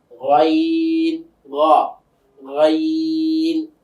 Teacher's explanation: যে হলকের শেষ ভাগ থেকে গাইন।